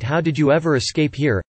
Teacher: As is common with WH questions, there is a rising intonation on the question word, and a falling intonation at the end of the question